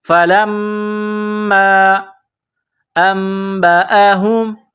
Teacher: باسمائہم، فلما، فا زبر فا، لام میم زبر لم، میم الف مد زبر ما، لام کو میم کے ساتھ پلس کرنا ہے، میم مشدد ہے تو یہاں پر آواز ناک میں چھپائیں گے، غنہ کریں گے